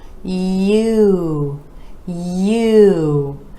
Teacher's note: For this vowel sound, we're gliding from the Y to U.